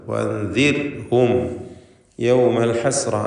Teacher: വഅൻദിർഹും റായിന് തർക്കീഖ് കൊടുക്കണം. ശേഷം റായിന് സുക്കൂനും തൊട്ട് മുമ്പിൽ കസ്റുമുള്ളതുകൊണ്ട് വഅൻദിർഹും എന്ന് നേരിയ റാ ഉച്ചരിക്കുക.